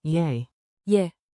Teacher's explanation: Say it like a quick, soft yay, yeah, with rising intonation, think two ascending notes.